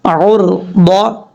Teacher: ضاد حروف مستعلیٰ میں سے ہے، پر پڑھا جائے گا